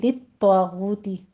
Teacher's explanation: غو میں واو مدہ ہے، غین کو بھی پر پڑھنا ہے ، دونوں پر 2 2 کاؤنٹ کری، اور فقاتلو میں مد